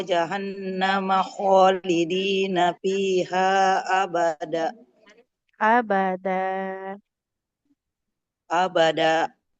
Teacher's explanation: Kalau tanwin fathah ibu ya di akhir ya tetap dipanjangkan ya.